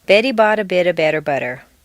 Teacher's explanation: all of the T's are in weak positions, so they all sound like soft D's